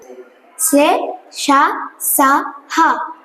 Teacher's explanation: ఇవి గాలిని బయటకు ఊదుతూ పలుకబడతాయి కనుక వీటిని ఊష్మాలు అని అంటారు.